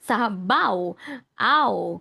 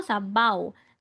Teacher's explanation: Or diphthong. Magkatabing patinig at malapatinig, no, na tunog sa isang pantig. W at Y. Tandaan, tunog sa isang pantig or sa isang syllable. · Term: diptongo